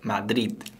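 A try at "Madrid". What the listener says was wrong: 우리 한국말로는 마드리드 이렇게 쓰거든요. 근데 이렇게 읽으면 안 되죠? 안 돼요. 마드리드가 아니라 그래서 마지막에 이렇게 강세를 붙여서 읽는 거 같이 연습을 해 봤습니다.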